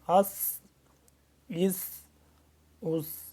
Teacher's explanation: ہم نے اب صاد کو اور سین کو جدا پڑھنا ہے، سین ایک تو سیٹی کی آواز ہے اور باریک ہے ذرا صاد کی نسبت